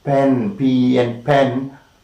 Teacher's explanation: the lower lip is against the upper lip, air is coming inside and so much of pressure is kept inside.